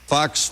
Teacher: it's got that nice long breathy F that goes into it